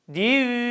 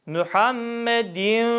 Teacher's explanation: sesin yarısı ağızdan yarısı genizden gelir idgam esnasında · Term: idğam nakıs